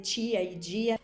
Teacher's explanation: se queremos imitar o português do Brasil, imediatamente vamos começar a palatalizar t e de.